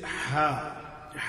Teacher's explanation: یہ جو محمد والی اور احد والی ہا ہے تو یہ ہا بھی وسط الحلق سے ادا ہوتی ہے